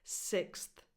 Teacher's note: You have to say the th after the x sound.